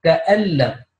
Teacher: noon with sukoon followed by lam with shadda noon will be dropped so it will be ka'allam a double l a m ka'allam